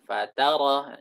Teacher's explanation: Katanya jangan ditekan di fa tapi tekan di ta